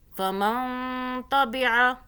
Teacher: آگے دیکھیں نون ساکن کا قاعدہ، اوپر جزم ہے نون کے، آگے تا آ رہا ہے، اخفاء کا حرف ہے، تو یہاں پہ ہم اس نون کو پر اخفاء کریں گے، یعنی کہ چھپائیں گے، زبان کو تالو سے ٹچ نہیں کرنا۔ فَمَن تَبِعَ ہدایا، یا کو نہیں کھینچنا، دال کے آگے الف ہے، دال کو کھینچیں گے۔